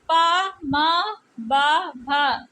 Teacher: ये पा वर्ग की ध्वनियाँ है, ये ओष्ठ से उच्चारित होती है, इन्हें ओष्ठ व्यंजन कहते हैं